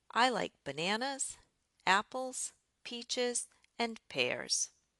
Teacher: every item in the list experiences a rise in tone except for the last one where I drop my tone.